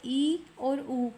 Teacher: संवृत स्वर इ और उ कम खुला मुख है इसमें। · संवृत स्वर देखिए मुख की आकृति कितनी खुलती है उसके हिसाब से। संवृत स्वर ई और ऊ, कम खुला मुख है इसमें